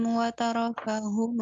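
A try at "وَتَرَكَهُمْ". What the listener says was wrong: Watarokahum. Mim jangan dipantulkan ya, Ukti ya. Jadi bukan watarokahum.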